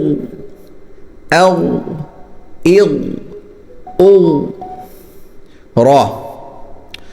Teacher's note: اور غین حلق سے نکلے گا، موٹا ہوگا